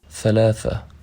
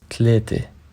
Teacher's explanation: The interdental fricatives of Arabic are normally not pronounced in Lebanese dialect. Th is replaced by t, and the is replaced by d, or z in some words.